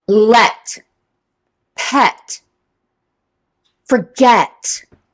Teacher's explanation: The open E or the lax E or the short E sound, E.